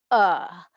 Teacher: the letter a in an open syllable is that it collapses into a schwa and um when it collapses into a schwa it says uh